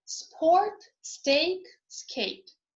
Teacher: when s precedes aspiration does not occur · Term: no aspiration